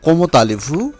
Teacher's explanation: প্রথম কোমো এর শেষে অনুচ্চারিত তে এবং আলে এর শুরুতে যে ভাওয়েল রয়েছে আ তার সাথে সন্ধি হয়েছে